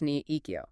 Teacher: When you have 2 third tones back to back, the first one changes its pronunciation to a second tone. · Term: third tone rule